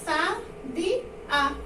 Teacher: O A é tônico. A gente tem uma palavra oxítona aí. Então, como ele é tônico, ele vai ser contado.